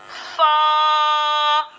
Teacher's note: फा का जो मखरज है ये है ऊपर के दांतों के किनारे और नीचे के होठ के तरी वाले हिस्से से ये हर्फ फा अदा होता है।